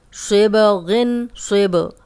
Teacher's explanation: اب با پہ جزم آ گئی ہے، کلکلا ہے، ہلا کے پڑھیں گے